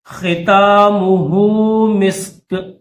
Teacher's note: ختامہ گولہا کے اوپر الٹا پیش ہے، تو اس کو 2 سیکنڈ کھینچیں گے. ٹھیک ہے، 1 یا 2 سیکنڈ اس کو کھینچیں گے.